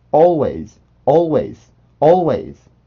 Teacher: 그리고 이제 우리나라에서 이 발음을 오와 어를 딱히 표현하기 힘들기 때문에 먼저 나오는 선행 소리인 오로 항상 표기를 하려는 경향이 있는데 오 소리는 아닙니다. 오는 아니고 조금 더 긴 소리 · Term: 오뚜기 발음